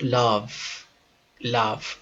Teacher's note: un sonido de V dentilabial si ustedes ubican sus dedos en la garganta van a darse